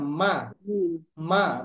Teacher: মিম মানে একদম ঠোঁট দুইটা একসাথে মিলে উচ্চারিত হবে, তাই না? দুই ঠোঁট একসাথে মিলে উচ্চারিত হবে।